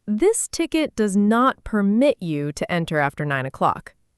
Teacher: permit, stress on the second part, is a verb, and it means to allow something